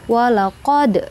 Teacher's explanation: Qod itu disebut dengan qalqalla sugro karena berada di tengah kalimat ya. Huruf qalqalanya dal maka harus dipantulkan.